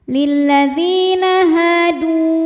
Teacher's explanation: karena ada wau sukun didahului damah maka Dal panjang dua harakat